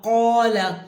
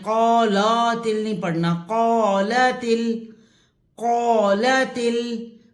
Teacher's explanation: قو لام زبر لا، قال تا کی زیر لام کی جزم سے ملے گی، اور اس جو لا ہے اس کو کھینچنا نہیں ہے